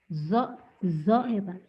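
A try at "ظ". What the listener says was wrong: ZHO, zo. Tapi zo-nya jangan di ujung lidah ya. Tadi ke dalam zo, zo.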